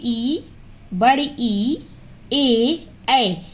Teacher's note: देखिए आपके ओठ गोल नहीं होंगे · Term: आवृत्त मुखी